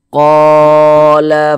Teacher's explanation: panjang yang memiliki harakat fathah tersebut begitu sehinganya Q dibaca panjang Mad Thobi'i panjang dua harakat dua harakat kira-kira sepanjang dua ketukan